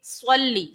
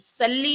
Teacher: پھر لفظ ہے صلی، صلی، صاد جو ہے یہ حروف مستعلیہ میں سے ہے، پر پڑھے جانے والے حروف میں سے ہے، تو اس کو ہم پڑھیں گے پر، موٹا پڑھیں گے، صلی، سلی نہیں ہے، صلی۔